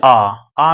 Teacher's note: विवृत कहेंगे। जैसे आ में क्या हो जा रहा है? पूरा खुल जा रहा है।